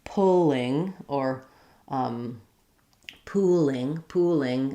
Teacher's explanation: if I'm saying pulling or pooling, I'm really using more of a light L